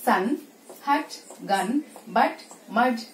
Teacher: ఈ సౌండ్ ఏంటంటే మనం ఒక వర్డ్ ని అటర్ చేస్తున్నప్పుడు ఆల్ ఆఫ్ సడన్ అలా వచ్చి వెళ్ళిపోతుంది. It won't be sustained there for long time. ముందున్న సౌండ్ ని వెనుకున్న సౌండ్ ని మనం ప్రెస్ చేసి ప్రొనౌన్స్ చేస్తాం. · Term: sudden a